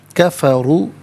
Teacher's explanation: را پر پیش ہے، را کو پر کر کے پڑھتے ہیں